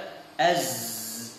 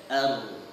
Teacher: kita ucapkan dan kita pegang pita suara kita az, maka terasa getaran pada pita suara kita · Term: al-jahr